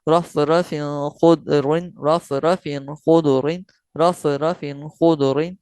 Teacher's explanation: غنہ نہیں کرنا ہے، ظاہر کر کے پڑھنا ہے ، اور فا تنوین کا قاعدہ آ رہا ہے اس میں،